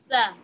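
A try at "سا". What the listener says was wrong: Correct. But elongate it a little bit because there's alif after that. Sa.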